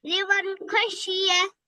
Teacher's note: যার কারণে এখানে নুন সাকিনকে কি বিনা গুন্না জাহির করে পড়তে হবে